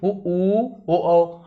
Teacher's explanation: आपके ओठ जो है क्या हो गोल हो रहे है ना इसी को कहते हैं वृत्ताकार स्वर उ ऊ और ओ औ